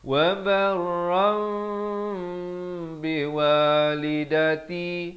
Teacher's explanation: Ditukarkan kepada bunyi mim ya, daripada barran jadi barram. Tapi bibir itu hampir bersentuhan ataupun sekadar bersentuhan. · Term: hukum iqlab